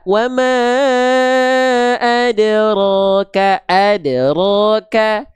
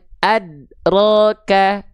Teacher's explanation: Satu ada qalqalah itu yang tepat. Yang kedua enggak ada qalqalahnya kurang tepat. Yang ketiga tertahan kokolanya. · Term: kolkolah